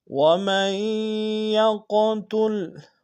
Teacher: وَمَن يَقْتُلْ، وَمَن میں میم کو یا کے سامنے لیں گے، یا کے اوپر شدہ زور دیں گے، اور یا کو قوف کے ساتھ ادا کریں گے، قوف کو موٹا ادا کریں گے، قوف کے اوپر جزم ہے، قلقلہ کریں گے